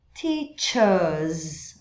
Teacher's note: no britânico não enrola esse R, mas prolonga o E.